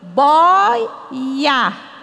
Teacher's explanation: palavra boia não tem mais acento porque eu digo boia tá então o i e o o ficam juntos e a sílaba é paroxítona a sílaba forte é a penúltima